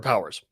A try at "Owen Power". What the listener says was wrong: Owen Power. No. Singular. Just one Power. No, not plural. Power Ranger. Owen Power Ranger.